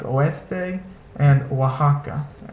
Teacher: It's not exactly the W sound, but if you say the vowels together smoothly and fluidly, the W sound will almost come naturally